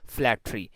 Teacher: So you can see that stress is in the beginning, and due to syllabic consonant, this word has two syllable, and the second word is forming by this syllabic consonant.